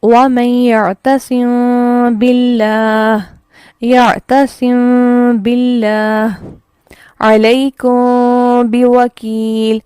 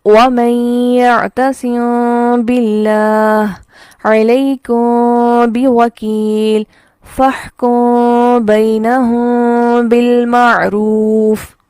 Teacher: تو یہاں پر وَمَن يَعْتَصِم بِاللَّهِ، یہاں پر جب اخفا کیا جاتا ہے 2 صورتیں ہوتی ہیں کہ یا تو میم پڑھتے ہوئے ہونٹوں کو پراپر ملا لیا جائے جو کہ میم کا مخرج ہے، یا میم کو ادا کرتے ہوئے ہونٹوں کو تھوڑا سا کھلا رکھنا، پورا پراپر ہونٹوں کو نہیں ملانا بلکہ تھوڑا سا فاصلے پر رکھنا، اور اخفا کی ساؤنڈ دینا اور ساتھ ہی با کو ادا کر لینا